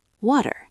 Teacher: It's not a hard D like dog. It's a very quick tap of the tongue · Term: soft d